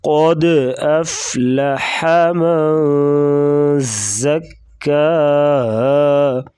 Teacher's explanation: قاف کو موٹا کریں گے، دال ساکن ہے تو یہاں پر قلقلہ کریں گے